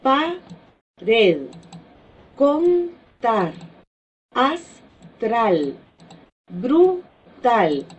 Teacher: todas ellas llevan la fuerza de voz en la última sílaba. Sin embargo, estos ejemplos que nosotros pusimos en esta ocasión no tienen la tilde marcada gráficamente, sino que únicamente la sílaba tónica es por la mayor fuerza de voz. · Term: agudas